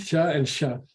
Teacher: There's no difference in the quality of the sound. Okay. Sha and sha. But one is high and one is low. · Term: high tone